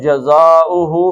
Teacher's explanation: مد اصلی تھا، آگے حمزہ آیا تو اس کے اوپر بڑی مد پڑ گئی، 4 حرکتیں اس کو آپ کھینچ لیں